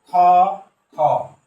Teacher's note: খ খ একেবারে হলকের শেষ ভাগ থেকে খ খ